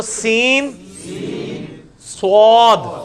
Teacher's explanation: سین کو موٹا کریں گے تو سین, صاد